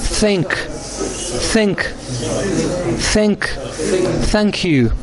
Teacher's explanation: your tongue should be in between your teeth upper and lower teeth and let the air pass through